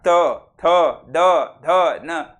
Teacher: लचा उच्चार करा काय होते पहा बरं ल बरोबर दाताच टोकरी जिभेच टोक दाताला लागते · बरोबर, दंत्य वर्ण, दंत्य म्हणजे दात. ज्या वर्णाचा उच्चार करताना जिभेचं टोक, जिभेचं पात हे दाताला स्पर्श करते. दाताला म्हणजे बाहेरून कुठून आणावं, दाताच्या आतील बाजूला स्पर्श करते, त्याला म्हणतात दंत्यवर्ण. · दाताच्या आतील बाजूला जिभेचे टोक स्पर्श करते त्याला दंत्यवर्ण म्हणतात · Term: दंतवर्ण